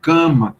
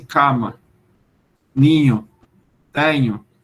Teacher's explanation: Então, você diz a gente diz em português do Brasil, cama, saindo parte do A pelo nariz, ninho, tenho. Mas se você ouvir um português falando, você pouco vai ouvir a nasalização. É como se eles dissessem cama, ninho, tenho, eu tenho isso.